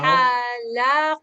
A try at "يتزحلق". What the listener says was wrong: No. The ha is sukun. Yatazah.